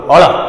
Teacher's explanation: જીભ વળશે, ઉપર જશે તાળવા પર ને ભટકાઈને પાછી આવશે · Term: પ્રતિવેષ્ટિત ધ્વનિ